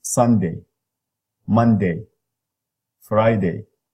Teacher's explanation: So tense, mid front, tense, and unrounded vowel.